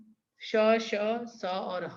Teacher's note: जिन वर्णों के उच्चारण के समय मुंह द्वारा वायु तीव्र गति से रगड़ खाने की वजह से गर्म होकर बाहर निकलती है, उन्हें ऊष्म व्यंजन कहते हैं।